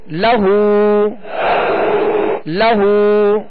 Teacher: لام پر زبر ہے، آواز اور منہ کھول کر ادا کریں گے مگر کھینچیں گے نہیں. اور آگے ہا پر الٹا پیش ہے، جسے جو واو مدہ کے قائم مقام ہے، ایک الف کی مقدار میں اسے کھینچ کر ادا کریں گے.